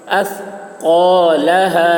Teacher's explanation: قاف کو موٹی آواز میں